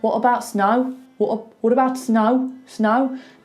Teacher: That's very Birmingham going up like that at the end.